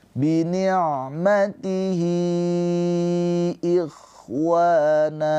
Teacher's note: Nah, ini namanya mad silah thwilah. Mad silah thwilahi dibaca panjang boleh empat atau lima harakat.